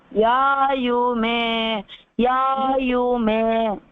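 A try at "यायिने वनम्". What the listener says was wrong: It's not you, it's ye. Yayine.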